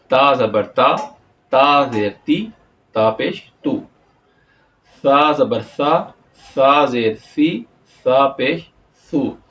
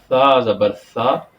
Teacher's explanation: جب سا آئے گا تو سا کو ہم زبان کو دونوں دانتوں کے درمیان لے کے جائیں گے تو سا کی آواز آٹومیٹک ہماری نکل آئے گی اور ہمارا تلفظ بالکل ٹھیک ہو جائے گا۔